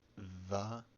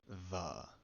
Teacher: Ve tends to be a voiced bilabial fricative. Va, or a voiced labiodental fricative